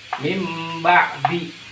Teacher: Dibalikkan huruf nunnya. Diubah huruf nunnya menjadi huruf mim. Mim ba'di. Biasanya kalau dalam Al-Qur'an itu ada tambahan sedikit huruf mim kecil di sini. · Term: iklab